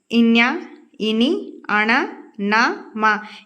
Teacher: వీటన్నింటిని మనం ముక్కు సాయంతో పలుకుతాం సో వీటిని అనునాసికాలు అంటారు